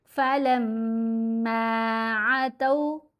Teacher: میم پر غنہ کیا اور زبر کے بعد الف ہے، لمبا بھی کریں گے 2 حرکات کی مقدار. یہ الف حرف مدہ ہے.